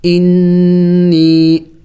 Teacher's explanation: یا کے اوپر خود سکون ہے تو یائی مدہ بھی ہے اور چھوٹا مد بھی ہے تو اس کو تھوڑا سا زیادہ لمبا کریں گے کھینچیں گے. اور نون مشدد ہے نون مشدد پر غنہ کیا جاتا ہے یعنی ناک میں آواز پیدا کرنا ہوتا ہے